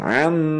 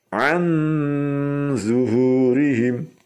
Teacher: An mencucu sambil dengung ya, atau dengung sambil mencucu. Karena nun sukun bertemu dengan huruf isti'la juga di situ zo.